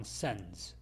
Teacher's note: sends도 마찬가지로 빨리 할 때는 이 d 발음을 하지 않습니다. 그래서 그냥 sends.